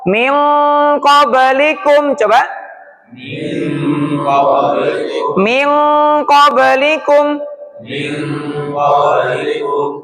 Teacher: Kalau eng ini lebih ke dalam ee dekat tenggorokan, yaitu pangkal lidah qof.